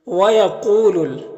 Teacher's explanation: قاف یہاں پر حروف مستعلیہ میں سے ہے تو اسے پر پڑھیں گے۔ یہاں پر واو ساکن سے پہلے قاف کے اوپر پیش ہے تو واو مدہ ہوگا، اسے ایک الف کے برابر کھینچ کر پڑھتے ہیں۔